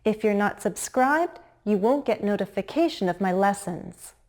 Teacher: Listen to my intonation. You'll hear a pause in the middle between the two clauses. And the two clauses have different intonation patterns.